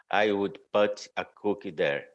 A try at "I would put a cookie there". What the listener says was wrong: So you're saying this as a pa, but it's not, it's a pu. The same sound you use here is here. It's 3 times. I would put So there's a different sound. I would put a cookie there.